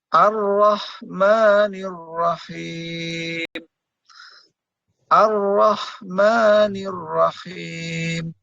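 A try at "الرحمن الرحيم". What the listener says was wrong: Ha. Hanya masih ada kecampuran kho gitu ya. Iya, agak naik dikit. Kalau yang ha. Kalau kho ya kho. Ha. Ar-Rahmanir-Rahim. Ar-Rahmanir-Rahim. Him ha.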